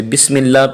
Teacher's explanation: اللہ کے لام سے پہلے جو ہے زیر ہے تو اس لیے وہ لام بریک پڑا گیا